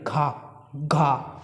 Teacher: घा एक ऐसा वर्ड है जिसमें हमारी जो जीभ है वो तालु से नहीं टकरा रही है।